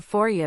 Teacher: for you reduces to for ya because it's quicker to say.